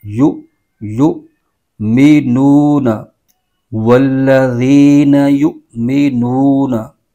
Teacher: हमजा साकिन आ रहा है इसको झटका देकर पढ़ेंगे